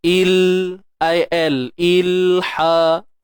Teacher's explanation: pegang makhraj lam tu betul-betul. Hujung lidah tu letak betul-betul pada langit tu.